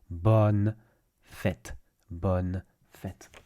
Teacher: There's no nasalized sound the way you have in bonjour, for example.